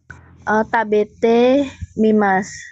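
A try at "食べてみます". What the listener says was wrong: Hai, tabete mimas.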